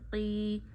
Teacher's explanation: یا ساکن سے پیچھے زیر آئے تو یا کو ایک انگلی جتنا کھینچتے ہیں، یا مدہ کرتے ہیں، تو یہاں یا مدہ کریے۔